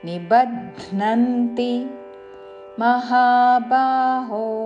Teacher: నిబధ్నంతి బధ్న మహాప్రాణాక్షరము ధాకి నావత్తుతో